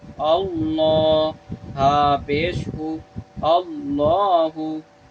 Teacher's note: जलालत वाला लाम आ गया, इसको हम मोटा पढ़ रहे हैं